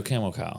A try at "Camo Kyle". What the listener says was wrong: It sounds like camel.